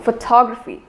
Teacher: the stress is not given on the initial syllable fo instead it is given on the second syllable